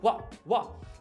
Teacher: no primeiro what, a gente fez uma parada glotal.